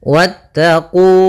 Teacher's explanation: wanya langsung ke huruf ta dan wawnya tidak dipanjangkan · Pada lafal qu ada mad tabi'i, yaitu ditandai dengan dhammah bertemu waw, panjangnya adalah 2 harakat.